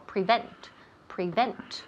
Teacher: the emphasis falls on the second syllable all right the second syllable prevent prevent all right so let's